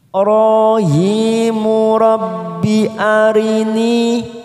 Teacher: ni kasrah bertemu ya sukun, dua harokat kita panjangkan